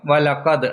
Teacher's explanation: ദാലിന് സുക്കൂൻ ഉള്ളത് കൊണ്ട് അവിടെ കൽക്കലയുടെ നിയമം വരും